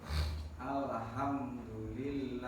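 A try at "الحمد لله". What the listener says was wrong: Alnya jangan ale ya.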